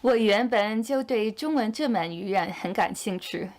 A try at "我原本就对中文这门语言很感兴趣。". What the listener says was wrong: Actually, one thing I noticed is that her GCC pronunciation is a bit unstable. Her GCC sounds are great when followed by an E, but when followed by an U sound, they sound a bit more like 猪出书。兴趣